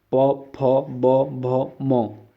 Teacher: और प वर्ग देखिए, प फ ब भ, प वर्ग का जो हमारा उच्चारण है हमारा ओष्ठ है। प फ ब भ म, ये ऐसे दोस्तों हमारे वर्ण हैं जिसमें आपके जो ओष्ठ है ये आपस में चिपकेंगे